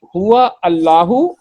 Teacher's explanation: Hamza will be dropped in pronunciation, not in writing. It will be written but not pronounced. · Waw will meet lam sound and Hamza will be dropped. Hamza will be dropped in pronunciation, not in writing. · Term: Hamzatul Wasl